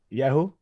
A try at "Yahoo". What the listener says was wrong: Most people put the emphasis on the first syllable, Yahoo.